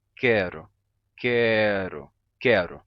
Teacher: no sotaque carioca de forma geral as vogais como e ou o e outras vogais também elas não são puras elas vão deslizar como em direção a um sonzinho de A então quando um carioca diz quero não não vai ser um